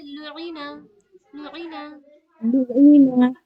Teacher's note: आइन की आवाज हलक से निकालिए